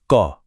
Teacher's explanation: अल्पप्राण जिन्हें बोलने में कम हवा निकलती है